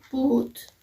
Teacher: other vowels is long u as in boot its voice and its place of articulation back and it's manner of articulation is close